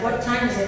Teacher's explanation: Time has a very aspirated sound.